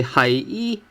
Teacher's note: when you say hai i, it actually sounds like tone 2 because it shows a rising tone from 5 to 1